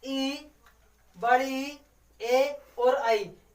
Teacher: इनका यानी कि जीभ का अगला भाग, जिनको बोलने में जीभ का हमारा अगला वाला भाग यूज होता है, वो हमारे अग्रस्वर कहलाते हैं